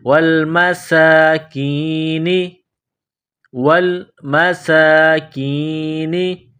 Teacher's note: سین میں سیٹی کی آواز پیدا کرنی ہے، سین کو باریک کرنا ہے، ایک الف کے لمٹ میں کھینچنا ہے. کاف کو باریک کرنا ہے.